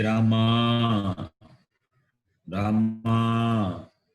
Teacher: Hey Rama, Rama, you just call, you stretch the last vowel, that is called Pluta